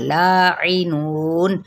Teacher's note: نو پہ مد اصلی بالواو اور نون پہ جب وقف کریں گے تو وقف بالاسکان ہو جائے گا